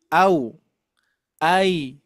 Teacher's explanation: ketika kita mengucapkan au itu bergabung, a dan waw bergabung. Itu sifatnya lin, lembut, lunak.